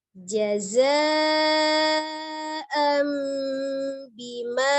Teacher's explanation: bunyi nun sukun nya menjadi mim sukun jadi dari and dibaca m menjadi mim sukun jaza m Bima · Nun sukun atau tanwin bertemu dengan huruf ba, hukumnya adalah iqlab. Ya, merubah nun menjadi mim, merubah bunyi nun sukunnya menjadi mim sukun. Jadi dari an dibaca am menjadi mim sukun.